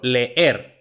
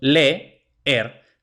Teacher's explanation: dos vocales seguidas que se pronuncian en sílabas distintas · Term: hiatos